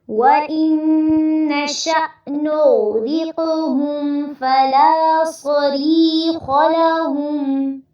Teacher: وَإِن پہ نون مشدد پہ غنہ کرنا ہے